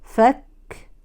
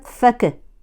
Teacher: والهمس مع الكاف بمرور النفس لا بمرور الصوت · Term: همس الكاف